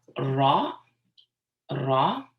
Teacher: It's a slight roll. It's not as pronounced as the Spanish ra, but it's definitely not like just, saying R.